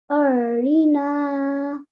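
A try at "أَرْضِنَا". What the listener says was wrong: Ardina. Remember to read the dod here as well. You can read it zui or you could read it dui. Ardina.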